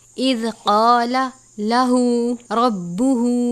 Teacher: ہا کے اوپر الٹا پیش اور چھوٹی مد ہے. چھوٹی مد کی مقدار 3 الف کے برابر ہے